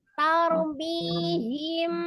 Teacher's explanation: Tar, tapi tidak ditaur ya. Ro-nya tidak dibantu dengan bibirnya.